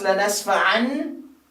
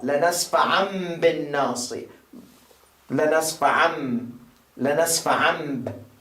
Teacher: So you don't pronounce lanasfa'an, you pronounce lanasfa'am, because there is ba.